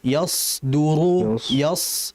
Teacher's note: Perhatikan di situ ada huruf shad. Huruf sad ini huruf yang dia mengalir disertai ketebalan. Yasu yas. Yas jangan diganti yas ya.